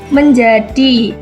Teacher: Menjadi itu E-nya seperti e terbalik karena itu E untuk emas.